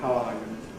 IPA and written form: haʊ ˈɑː ju (how are you)